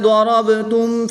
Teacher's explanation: ضاد حروف مستعلیہ میں سے ہے تو اس کو پر یعنی موٹا پڑھیں گے، را پر زبر ہے تو اس کو بھی پر پڑھیں گے۔ با حروف قلقلہ میں سے ہے، اور جب حروف قلقلہ ساکن ہوں تو ان میں قلقلہ خوب ظاہر کر کے پڑھیں گے۔